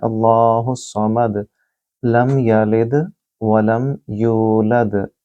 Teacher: دال آخر میں ہے اور یہاں بھی دال، تو ان کو بھی قلقلہ یعنی کہ گونجتی ہوئی آواز محسوس ہوگی